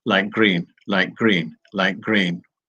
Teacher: It makes speech slow to have that T and then a G sound. So what we do when we speak is we change that T into a G.